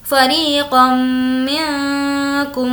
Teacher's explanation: میم ساکن کے بعد میم ہے، ادغام شفوی ہوگا، غنہ کریں گے